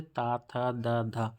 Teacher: दंत व्यंजन ता, पूरा ता वर्ग, जिसमें हमारे जीभ जो होती है वो दांतों को टच करती है